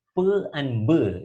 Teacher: produced by means of the touching of the lips with each other so therefore they are called bilabial consonants